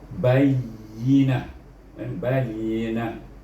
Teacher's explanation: ha nya hamas bunyi bayina, bayina, ha pangkal halkum